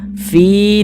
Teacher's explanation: kasrah maka huruf yang memiliki harakat kasrah ini dibaca panjang sehingganya Fi dibaca panjang Mad Thobi'i panjangnya dua harakat